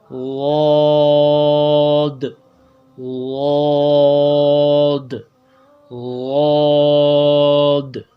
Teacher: حافہ لسان، زبان کے آخری جو ہے کنارہ، وہ اوپر کے دانتوں کے جڑوں سے، جو ازراز ہے اس کے جڑوں سے لگ کر جو ہے بائیں طرف سے آواز نکالی جاتی ہے. دونوں طرف سے بھی نکالا جاتا ہے اور دائیں طرف سے بھی نکال سکتے ہو، لیکن بائیں طرف سے نکالنا یہ زیادہ آسان ہے، جیسے واد، واد.